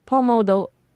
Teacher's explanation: The emphasis is on the do syllable.